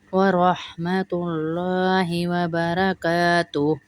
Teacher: اللہ کے لام کو بھی موٹا کریں گے کیونکہ اس سے پہلے پیش آ رہا ہے